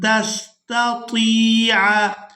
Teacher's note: ता को याए मद्दा की वजह से खींचकर अदा करेंगे।